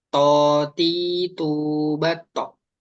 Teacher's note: ketika to berharokat fathah tadi itu sudah ada tebalnya. Tapi ketika kasroh seakan-akan malah hilang dan domah juga.